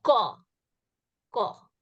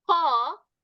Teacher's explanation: What it just means, like when I'm saying ko, ko. When I say the next one, ko, I almost have an extra puff of air coming through when I say this one. So that is the aspirated sound.